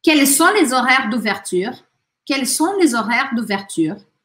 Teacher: Quels sont, não falo S, não falo T.